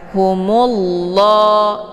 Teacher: dibaca tebal karena sebelum lafzul jalalah berharakat zumah yaitu mu jadi cara bacanya ditebalkan humullah Ya dan untuk Alif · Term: tafkhimun mufakkamun